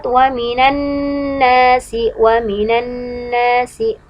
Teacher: bagian yang harus dibaca Dua harokat yaitu bagian Nun yang bertasydid